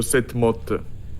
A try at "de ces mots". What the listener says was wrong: De ces mots, not mode.